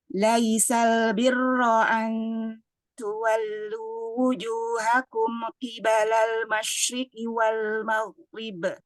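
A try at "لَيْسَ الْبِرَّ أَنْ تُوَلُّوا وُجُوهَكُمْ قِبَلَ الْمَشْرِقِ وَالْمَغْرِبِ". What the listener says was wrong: Usahakan sebaiknya kita tidak berwakaf di sebelum kata walakin. Ada tempat kata yang sebaiknya ya kita hindari wakaf di sebelum kata tersebut.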